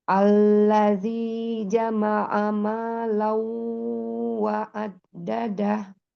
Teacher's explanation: Alladzi tasdid lamnya itu ada dua lamnya tetap tawasnya jangan hilang.